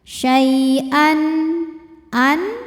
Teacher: Syaian an ada hukum izhar halqi. Sebab ada tanwin fathah menghadapi huruf halqi atau huruf tenggorokan yaitu hamzah. Maka tanwin dibaca jelas